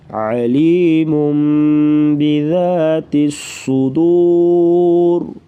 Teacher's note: صاد کو پر پڑھیں گے اور را جو ہے وقفاً موٹی پڑھی جائے گی, آگے ملائیں گے تو پھر را باریک ہوگی.